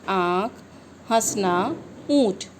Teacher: अनुनासिक स्वर वे होते हैं जो स्वर मुख और नाक से बोले जाते हैं, जिसका सूचक चंद्र बिंदु होता है।